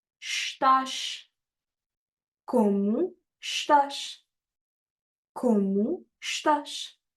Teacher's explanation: any word in Portuguese that ends with S, we pronounce the S as a sh sound